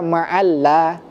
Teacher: Kalau maalla dia nanti jadinya lam tarqik, lam tipis.